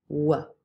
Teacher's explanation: you're using your lips and you're also moving the back of your tongue towards the velum. So W has two places of articulation, labial and velar. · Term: labiovelar consonant